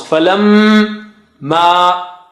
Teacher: Only meme with shadda, which should come out from nose.